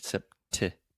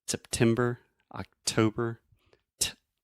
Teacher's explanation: So that is a true T, sept. I'm really aspirating, which means I'm breathing air out of my mouth and going t, making that pop sound.